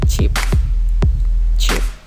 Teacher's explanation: brief stopping of the stream with an obstructed release which causes some friction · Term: africans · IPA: [tʃ]